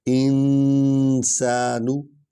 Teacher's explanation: یا ایہا الانسان، ٹھیک ہے، یا کو لمبا کریں کیونکہ اس پر مد ہے، ایو کو اکٹھے پڑھیں کیونکہ یا پر شد ہے، اور ہا جو ہے اسی نے کھڑی سے نکالنی ہے. انسانو، نون جو ہے مجزوم ہے اور اس پر نون غنہ کرنا ہے